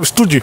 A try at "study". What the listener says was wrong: Study. Study. Você tinha errado, você falou study. Parecendo os indianos falando inglês. Colocando o no final.